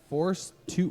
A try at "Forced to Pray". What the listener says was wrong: Forced. ED. ED to pray.